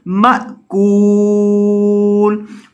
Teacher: حمزہ کو جھٹکا کر کے پڑھا جائے گا کیونکہ حمزہ ساکن ہے. حمزہ ساکن کو ہمیشہ جھٹکا کر کے پڑھا جاتا ہے تو اسے جھٹکا کر کے پڑھیں گے مأکول.